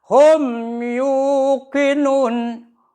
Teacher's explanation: mim mati di depannya ada ya maka bacanya harus izhar mimnya harus jelas